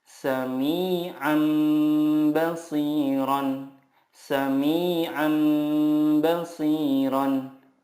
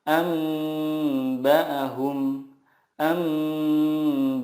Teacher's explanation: mengganti nun sukun dengan mim sukun dan disertai gunnah 2-3 harokat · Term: iqlab